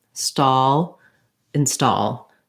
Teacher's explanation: start with a stressed syllable stall and then add your unstressed syllable as a light little touch · habits break it up start it a new way stall install so that my in is just a light stepping stone to my main stress syllable stall that also gives you more time for getting the vowel sound